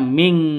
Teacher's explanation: Cara bacanya samar didengungkan siap-siap ke huruf qofnya. Kenapa? Karena ini terus non matinya ditambah dengan ng makanya disebut e dibacanya ming seperti itu ya. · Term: ikhfa hakiki